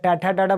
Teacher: अगर ट ठ ड ढ बोलना है तो हमको तालू के ऊपर क्या चाहिए? मूर्धा चाहिए